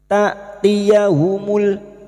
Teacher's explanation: Hamzah sukun jangan samakan dengan ain. Hamzah sukun sifatnya jahar dan syiddah, tertahannya nafas dan tertahannya suara. Ta'tiyahumul jangan dibaca ta', bukan ain, ini hamzah yang memiliki sifat jahar dan syiddah, tertahannya nafas dan tertahannya suara.